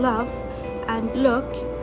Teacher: The light La, and it comes before vowels like in love and look